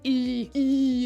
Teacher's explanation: E is a very squished, very squished sound, right? Like it sits in your mouth and you have to like put your teeth really close together and your tongue like shoots up to the top of your head and you just e it's very closed.